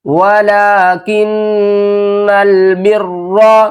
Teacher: نون مشدد ہے، گنہ کریں گے، را کو موٹا پڑھیں گے